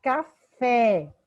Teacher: O tá é a sílaba tônica, recebe o acento. Café, fé é a sílaba tônica, é a última, então é uma oxítona